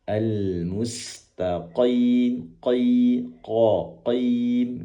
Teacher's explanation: Kemudian qof. Qof ini dari pangkal lidah yang dikeataskan tebal tentunya. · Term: qaf